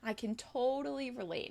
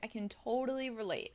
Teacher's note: I'm stressing totally because it's showing fullness